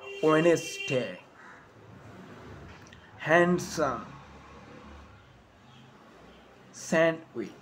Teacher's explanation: I am not pronouncing the D in sandwich. I am just pronouncing the consonant N sound before it.